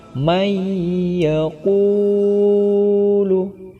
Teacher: nun mati bertemu dengan salah satu huruf Idgham Bighunnah yakni Iya maka cara bacanya harus didengungkan atau ditasydidkan